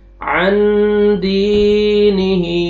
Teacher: नून साकिन के बाद हुरूफ इख्फा में से दाल इख्फा करेंगे, नाक में आवाज लेके जाएंगे।